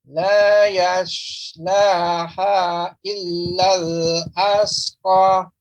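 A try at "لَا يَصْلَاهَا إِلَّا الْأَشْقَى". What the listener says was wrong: Ya, di sini laha jadinya Bapak. Ha kecil. Seharusnya ha besar. Laha dan shin. Illal ashqa. Ashqa. Coba ucapkan ashqa.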